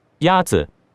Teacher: Yazi is pronounced with a first tone. In Mandarin, there are 4 tones, which are essential to distinguish the meaning of words. The first tone is a high, level tone.